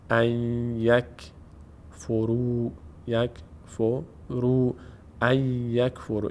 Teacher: به جای نون اینجا باید یا تلفظ بشه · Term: ادغام